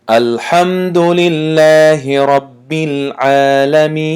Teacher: خب لله عینا همون قاعده گفتگیمون لام لفظ الله ترقیق یعنی تنک شده است. خب رب گفتنده حرف را رای تفخیم یعنی غوص خوانده میشد به خاطر زبر داشتنش